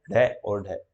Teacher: जिन व्यंजन ध्वनियों के उच्चारण में जिह्वा की जो नोक है कठोर तालु के साथ झटके साथ टकराकर नीचे आती है। तो मैंने बताया था उच्छिप्त का मतलब एकदम से उठना और फिर जोर से गिरना, ठीक है।